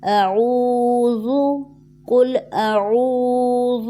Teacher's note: واو مدہ ہے، 1 سیکنڈ کے لیے اس کو کھینچیں گے